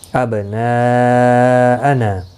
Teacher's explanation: ابناءنا، یہاں پر دیکھیں یہاں پر بھی مد متصل ہے، حروف مدہ کے بعد حمزہ آیا ہے، اس لیے ایک ہی کلمے میں تو مد متصل لگی ہے